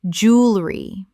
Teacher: Only 2 syllables in natural British English speech. Americans say jewelry with 3.